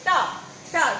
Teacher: अब इनको बोल के देखो हमारी जीभ मूर्धा को स्पर्श करती कि नहीं, बोल करती है टा टा। जब बोलते हैं तो टा है जीभ किसको स्पर्श कर रही है मूर्धा को, ऊपर वाले भाग को स्पर्श कर रही है। था डा धा अणा रा सा।